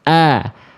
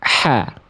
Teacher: Ha besar dari pangkal tenggorokan, Hamzah dari pangkal tenggorokan nggak pakai nafas, a. Hamzah, ha besar dari pangkal tenggorokan tapi pakai nafas, ha. Paham sampai sini?